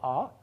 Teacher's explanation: a blue vowel that is a back low vowel